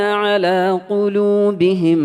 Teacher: ഖാഫിന്റെ മഖ്റജോ? നാവിന്റെ മുരടും മേലെ അണ്ണാക്കിന്റെ മാംസള ഭാഗവും